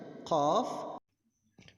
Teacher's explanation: keluarnya huruf ini berasal dari pangkal lidah yang berdekatan dengan tenggorokan dan ditekankan pada langit-langit mulut bagian belakang.